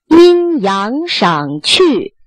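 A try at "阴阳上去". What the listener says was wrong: 那 就 去 ， 就 使 劲 长 拖 了 ， 使 劲 不 代 表 发 长 ， 阴 阳 赏 去 ，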